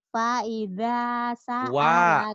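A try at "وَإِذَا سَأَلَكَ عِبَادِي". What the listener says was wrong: wa bukan fa wa. Wa idza sa'alaka ibadi.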